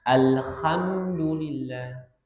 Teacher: ada yang mengucapkan huruf ha ini seperti ada dengkuran.